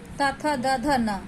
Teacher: त थ द ध न ये दंतस्य व्यंजन है। इन्हें बोलने के लिए हम दांतों को जीभ से सटाकर बोलते हैं